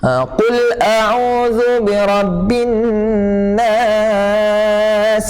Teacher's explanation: Sin ni huruf sifat huruf dia sofir, iaitu berdesir.